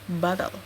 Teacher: suku kata kedua yang lemah tidak mengandung vokal sama sekali, tetapi seluruhnya terdiri dari konsonan satu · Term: konsonan suku kata